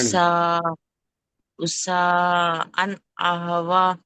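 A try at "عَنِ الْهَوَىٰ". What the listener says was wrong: ఇక్కడ దీర్ఘం ఉంది, అలిఫ్ సగిరా.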